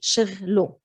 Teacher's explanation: Luckily in Lebanese, we don't have like a case ending. So شغله, we don't pronounce it as a ha, simply as an o. We're dropping the ha.